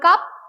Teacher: If you speak the word cup, you will not find any puff or any air will not come out from your mouth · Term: unaspirated